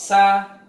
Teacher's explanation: Ketika sin diucapkan molor, sa, nggak boleh membentak sa. Kemudian yang berikutnya sin juga istifal. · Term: rokhwah